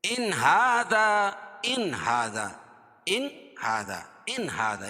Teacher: یعنی اس کو ظاہر کر کے پڑھیں گے، اس میں غنہ نہیں کرنا ہے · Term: اظہار